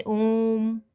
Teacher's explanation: इन्हें हर्ष स्वर से 2 गुना समय लगता है बोलने में। प्लुत स्वर जैसे ओम, इनमें हर्ष स्वर से 3 गुना समय लगता है, इसको खींच के बोला जाता है।